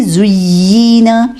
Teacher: یہاں نبر کرنے کی ضرورت نہیں ہے، یعنی آواز کو ریز نہیں کریں گے، ٹھیک ہے، بس رخاوہ کی صرف دیں گے، یعنی آواز تھوڑی دیر مخرج پہ رکھیں گے۔